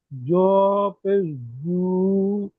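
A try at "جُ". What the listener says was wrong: জু, টান হবে না। জের জি, জ পেশ জু।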